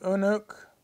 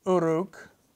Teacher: your tongue is in the same place so the N becomes an R